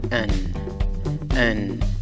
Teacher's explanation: comienza con el sonido de la vocal débil schwa, A, más el sonido de la consonante N. Pronunciarás la palabra como an.